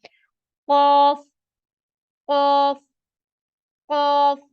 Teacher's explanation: क यह भी मोटे हरूफ में से है इसको भी हम भरे हुए मुंह के साथ पढ़ेंगे